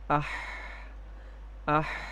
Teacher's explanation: ہا کی ادائیگی میں سانس بھی جاری ہے اور آواز میں پستی ہے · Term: ہمس